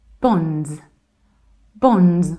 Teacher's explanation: So in the British accent, we say bonds. Bonds with z at the end.